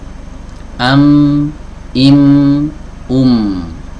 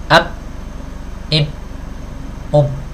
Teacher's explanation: huruf mim tidak akan bisa dipisah dari sifat ghunah